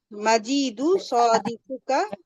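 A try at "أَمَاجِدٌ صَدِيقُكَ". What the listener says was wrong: মাজিদুন, sorry, এখানে আপনি মাজি টান দিতেছেন, মাজিদুন।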